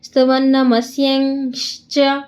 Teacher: ಸ್ಯ ಆದಮೇಲೆ ನಮಗೆ ಅರ್ಧ ಚವರ್ಗದ ಕೊನೆಯ ಅನುನಾಸಿಕವನ್ನು ನೀವು ಹೇಳಬೇಕು. ನಿಯ ಅಂತ. ಹೇಗೆ ಸ್ತುವನ್ನಮಸ್ಯಂಶ್ಚ ಅಂತ ಸೇರಿಸ್ಕೋಬೇಕು.